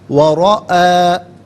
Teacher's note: جب اسے ہم انفرادی طور پر پڑھیں گے تو رعا حمزہ کو کھینچ کر پڑھیں گے تھوڑا سا، لیکن ملا کر پڑھیں گے تو حمزہ پر زبر ہوگا، اور المجرمون کے لام ساکن کے ساتھ ملائیں گے، درمیان میں سے الف یعنی حمزہ کو حذف کیا جائے گا۔